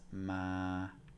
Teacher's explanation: we have no tone which is ma it's monotone